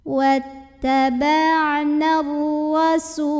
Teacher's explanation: Ra dibunyikan secara tafkhim karena ra-nya berbaris di atas. Maka ra dibaca dengan tebal dengan cara mengangkat pangkal lidah kita · Su mad dhabi'i karena ada waw sukun didahului dhammah. Maka ini juga sinnya panjangkan dua harokat saja.